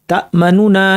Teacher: একটু দ্রুত চলে গেলাম আর কণ্ঠস্বর একটু নিচু করে ফেলেছি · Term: রওম